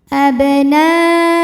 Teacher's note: Na dihukumi dengan mad wajib muttasil, sebab ada mad tabi'i yaitu nun dengan baris fathah ketemu hamzah, yang ini yang hamzahnya ya di atas waw, maka dalam satu kata yaitu kata abna'u, maka nun dipanjangkan boleh 4 boleh 5 harokat.